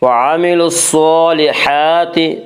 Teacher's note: صاد کو پر پڑھیں گے، صاد حروف مستعلیہ میں سے ہے۔ حروف مستعلیہ 7 ہیں جن کا مجموعہ خص ضغط قز ہے، یعنی خا، صاد، ضاد، غین، طا، قاف، ظا، یہ 7 حروف ان حروف مستعلیہ کہا جاتا ہے اور یہ ہمیشہ ہر حال میں پر پڑے جاتے ہیں۔